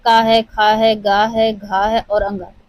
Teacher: यह हमारे कंठ से उच्चारित होते हैं